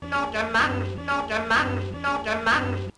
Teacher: The strut vowel is pronounced with the tongue fairly central and low in the mouth, so something like ah.